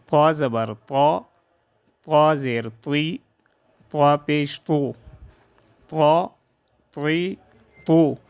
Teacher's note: خوب پر اور سخت آواز سے ادا ہو، صفت استعلاء، اطباق اور شدت کی وجہ سے۔